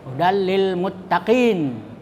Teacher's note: Idgham itu artinya dimasukkan. Kemudian bila gunnah tanpa dengung, ya, jadi tidak boleh berdengung. Hudalli itu dimasukkan, tidak terbaca itu tanwinnya, jadi dia terbaca lam. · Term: idgham bila gunnah